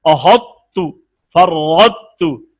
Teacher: अब ता में क़ा दाखिल हुई है लेकिन क़ा की तफखीम बाकी नजर आ रही है, तो ये नामुकम्मल अधूरा इदगाम हुआ। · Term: इदगाम नाकिस